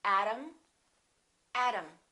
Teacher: T between two vowels sounds exactly like the D. Atom, atom.